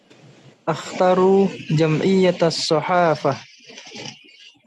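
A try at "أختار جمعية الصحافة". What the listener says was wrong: Akhtaru, hanya dipanjangkan ya. Ulang sekali lagi.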